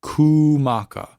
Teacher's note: it's going to extend the u sound and it's going to place the emphasis on the ku, kumaka. Because normally with Hawaiian language, the way the emphasis falls normally, and I think in most situations, it's going to be on the second from last vowel. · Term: kahako